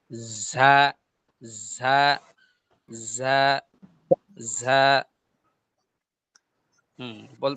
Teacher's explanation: ঝাটা উচ্চারণ হবে জিহ্বার মধ্যখান তার বরাবর উপরে তালুর সঙ্গে লাগাইয়া, হ্যাঁ? অর্থাৎ জিহ্বার মধ্যখান এটা উপরে তালুর সঙ্গে লাগবে।